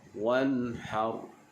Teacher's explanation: Ha makhrajnya di bahagian tengah kerongkong. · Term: huruf ha